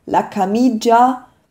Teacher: Ja, zum Beispiel bei la camicia wird das I gar nicht, dieses I zwischen dem C und dem A wird nicht ausgesprochen, ist also unbetont